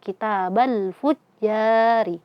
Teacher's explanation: Ri, karena dia kasroh maka dibaca tarqiq. Tipis.